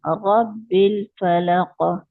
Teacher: रॉ फलक, मोटा है ना, रॉ पे जबर है तो रॉ मोटा पढ़ेंगे